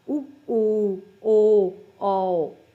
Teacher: ਜਿਨ੍ਹਾਂ ਦਾ ਆਪਾਂ ਉਚਾਰਨ ਜਦੋਂ ਕਰਦੇ ਤਾਂ ਆਪਣੇ ਬੁੱਲ ਗੋਲ ਹੁੰਦੇ ਨੇ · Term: ਗੋਲ ਸਵਰ ਧੁਨੀਆਂ